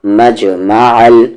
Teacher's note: عین کا مخرج یعنی کہ ایگزٹ بیچ والا حلق